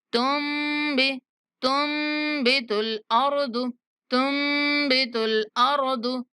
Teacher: یہاں پہ جو تا ہے میم کے ساتھ ملائیں گے اور جو نون کی آواز ہے وہ غنہ کی شکل میں ادا کریں گے